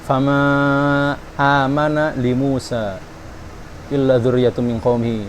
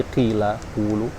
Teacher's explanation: Ketika tidak bertemu dengan hamzah, dia pelan aja, maksudnya sedikit aja matnya ya, seperti tadi qila, qulu. Jadi ketika bertemu dengan hamzah, matnya itu nambah.